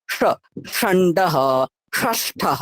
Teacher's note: তালুর পরে আরেকটু ভেতরের দিকে হচ্ছে মূর্ধ, মানে জিভটা আরেকটু গোল হবে, ঠিক আছে। যেখানে র বলছিলেন, যেখানে ট বলছিলেন, ওই ট এর জায়গাটাতে স এর উচ্চারণ হবে, ঠিক আছে, স। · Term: মূর্ধন্য স